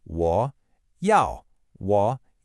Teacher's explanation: The first character, W is a third tone. It has that distinctive falling then rising quality.